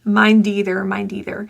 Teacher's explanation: The D is voiced. And the D links to either. It will sound like deether.